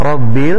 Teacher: Rabbil, ra-nya dibaca dengan tafkhim